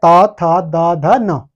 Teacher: यह आता है दंत्य व्यंजन।